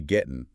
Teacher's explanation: Native speakers rarely pronounce the hard G at the end of getting in casual speech. They drop it entirely. The famous drop G.